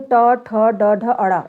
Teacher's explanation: जीभ की उल्टी हुई नोक का निचला भाग मसूड़ों को स्पर्श करता है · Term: मूर्धन्य व्यंजन